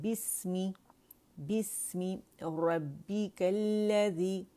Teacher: حمزۃ الوصل روانی میں گر جائے گا، بسمی